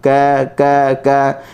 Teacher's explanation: kita tak perlu bagi dia angin kerana huruf kaf ni berangin ketika mana dia disukun